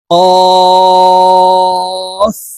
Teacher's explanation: কফ হরফের উচ্চারণ জিহ্বার গোড়া তার বরাবর উপরের তালুর সঙ্গে লাগাইয়া উচ্চারণ করব